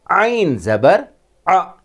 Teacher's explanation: عین ، ہا کی طرح، بھی حلق کے درمیان سے تلفظ کیا جائے گا